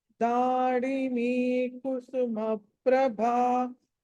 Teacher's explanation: Last లో భా ఏదైతే ఉందో అది మహాప్రాణం ఒత్తి పలకాలి.